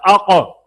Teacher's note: قاف میں قلقلہ پیدا ہوتا ہے